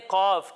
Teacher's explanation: एक हर्फ है कौफ और दूसरा हर्फ है काफ। जब हम कौफ की अदायगी करेंगे तो इसे मोटा करके पढ़ेंगे क्योंकि ये हरूफ मुस्तालिया में से है, यानी उन हरूफ में से है जिनको मोटा पढ़ना ज़रूरी है।